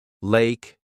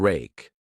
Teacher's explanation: For the L sound, put the tip of your tongue on the roof of your mouth behind your upper teeth. For the R sound, pull the tongue back without touching the roof of your mouth.